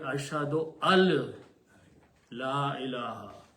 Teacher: It is actually ashhadu al la ilaha. It is not ashhadu an la ilaha, because the sound of the noon changes in the sound of lam. So it should be ashhadu al la ilaha.